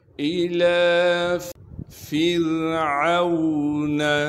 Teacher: را ساکن سے پہلے زیر ہونے کی وجہ سے را کو باریک کر کے پڑھیں گے